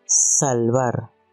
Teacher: produce un sonido silbante alveolar sin voz